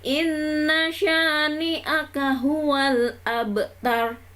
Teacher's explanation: Nunnya yang depan inna, itu nunnya silahkan ditekan 2 ketukan ya